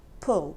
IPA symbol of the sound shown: ʊ